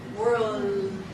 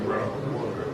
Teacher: just make sure that you prolong the Israeli L.